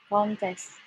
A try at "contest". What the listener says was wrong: Sama aja, ayo coba. Syllable-nya ada 2, ada kan sama test. Kalau noun, yang mana yang di stress? Ada kan, ada test. Harus beda tesnya.